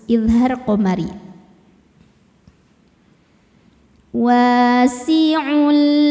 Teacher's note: alif lam qamariah sebab alif lam menghadapi huruf qamariah yaitu mim bacanya lam dibaca izhar atau jelas